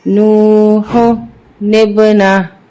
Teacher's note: نون با زیر نب نو ہو نب نون زبرنا نو ہو نبنا ہا الٹا پیش ہو نو ہو نبنا ہو وقفن نو ہو نبنا. وقف کی صورت میں الٹا پیش اومٹ ہو جائے گا